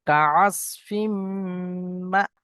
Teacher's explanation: ফা জাবার ফা, জিম জাবার জা, ফাজা, আইন জাবার আ, ফাজা আ, লাম জাবার লা, ফাজা আলা, হা মিম পেশ হুম, ফাজা আলা হুম, কাআসফিম, কাফ জাবার কা, আইন সাদ জাবার আস, কাআস, ফা মিম দুজের ফিম, তানমিনের পরে মিম এসছে, ইদগাম করে পড়তে হবে। মিমের উপরে তাসদিদ এসছে, ওয়াজিব গুন্না একালি পরিমাণ গুন্না করে পড়বো।